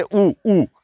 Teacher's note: ओष्ठ का मतलब होठ, यानी होठों से आवाज आ रही है। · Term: ओष्ठ्य